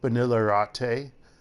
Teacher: I should be saying vanilla latte, but I say vanilla latte because it's a separate word, latte, and you make the latte as an R sound because they don't have L's at the start of a word in Korean